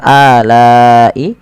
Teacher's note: Pada dasarnya la dipanjangkan 2 harokat karena datang setelahnya huruf hamzah, dan hamzah tersebut pada satu kata alai, maka la-nya dipanjangkan sepanjang 4 atau 5 harokat dan kita hukumi dengan mad wajib muttasil.